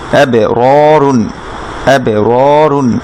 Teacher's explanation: রর উপরে ফাতহা, তারপর আমি খালি আলিফ, সেজন্য রতে এক আলিফ মাদ হবে